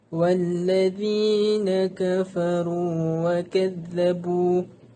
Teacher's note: Kafaru dan wa kazzabu mempunyai mad asli iaitu waw, dibaca dengan kadar 2 harakat.